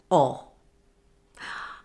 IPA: ɒ